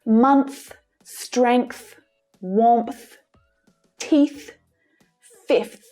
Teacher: And a TH at the end of a word is usually unvoiced.